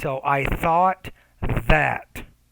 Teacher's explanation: be careful with the TH sound. You want to get your tongue in between your teeth.